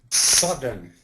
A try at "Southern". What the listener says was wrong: Get that more of a TH. Southern.